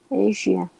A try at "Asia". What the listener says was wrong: Close. but try to vibrate it more. It's not Asia, but Asia.